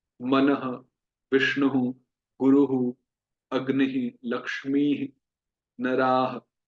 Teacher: Basically विसर्ग एक इको होती है, ह की ध्वनि होती है।